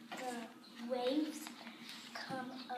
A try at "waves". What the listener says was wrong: Remember the S on it. Waves.